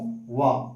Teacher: व ऐसा वर्ण है जिसका दंत और ओष्ठ से उच्चारण होता है